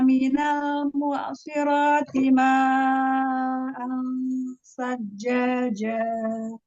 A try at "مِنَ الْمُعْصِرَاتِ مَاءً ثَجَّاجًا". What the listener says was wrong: Ya, huruf ain sukunnya kasih bainnya lagi. Minal mu'siro. Shotnya tebalkan lagi. Ya, shotnya angkat lagi pangkal lidahnya. Itbaknya tambahkan lagi. Kalau tidak menunaikan sifat pada huruf shot, nanti dia kayak seperti sin hurufnya ya. Karena makrotnya sama, shot dengan sin. Yang membedakan adalah sifatnya. Maka diangkat pangkal lidahnya lagi. Ya, minal mu'siro, tebal lagi, tebalkan lagi.